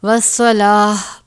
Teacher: تا ہے تو ہم اس کو ہا میں بدل دیں گے، والصلاۃ پڑھیں گے.